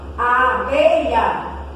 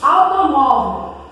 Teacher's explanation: Paroxítona, a sílaba tônica é a penúltima.